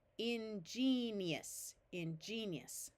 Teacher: here and after an i before an a o or U this G will have its soft sound of J